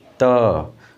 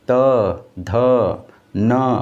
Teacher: इन सभी उच्चारण वर्डों का उच्चारण करते वक्त आपकी जीवा दंत से ज़रूर टकराएगी